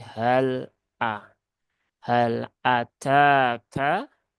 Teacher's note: ta dengan Kaf ya ini dua-duanya punya sifat hams